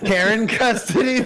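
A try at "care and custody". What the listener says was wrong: it sounded. care. just didn't separate care, and the word and.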